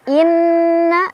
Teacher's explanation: Inna ada gunnah musyaddadah karena ada nun yang bertasydid. Cara bacanya didengungkan ya, ditahan sampai kerasa ke hidung.